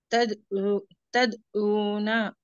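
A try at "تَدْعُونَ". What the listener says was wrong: आइन का मखरज अदा होना।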